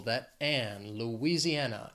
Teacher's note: it has five syllables the stress is on that fourth syllable